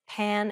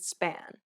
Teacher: place your hand over your mouth and compare the words pan and span note how there is a burst of air